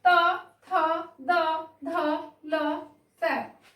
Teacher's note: दंत व्यंजन, जो दांतों से बोले जाते हैं, जिनके उच्चारण में दांतों का महत्वपूर्ण स्थान है।